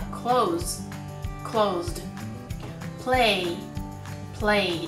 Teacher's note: 動詞の基本形の最後が有声音である場合、後に続く▁ED▁の発音も同じく有声音の▁D▁となります 。例えば▁Close▁Closed、▁Play▁Played、▁このように無声音には無声音、有声音には有声音と非常に分かりやすいルールになっているんです